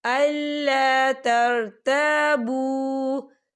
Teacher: यह देखिए, तरताबू, यहाँ पे वाव मद्दा हो रहा है। वाव साकिन है और वाव साकिन से पहले पेश है और इस पर छोटी सी मद भी है, तो हम इसे 4 हरकत के बराबर खींचे पढ़ेंगे